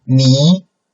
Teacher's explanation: it's an upcoming tone right beginning point is lower and then we start to make it up coming